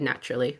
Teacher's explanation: So our tongue really touches our alveolar ridge for your L in natural speech.